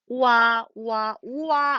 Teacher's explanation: 오 한 번 발음하고요. 아 한 번 발음해야 와가 된다는 얘기예요. 그러면 발음 기관을 두 번 움직인다는 얘기가 되겠지. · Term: 이중모음